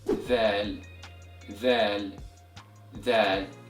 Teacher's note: And this letter is pronounced by passing the tip of your tongue through the upper and lower teeth, then powerfully pronounce it as you exhale. So dhal is an interdental letter, which means a sound comes from putting the tongue between both the upper and lower teeth · And the sound of the letter zal is equivalent to the letter th in English, as in the word the or the word other. And this letter is pronounced by passing the tip of your tongue through the upper and lower teeth, then powerfully pronounce it as you exhale.